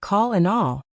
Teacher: The second type is at the end of words like call and all. Your tongue tip goes to the same place, but the back of your tongue goes down. This makes a deeper sound.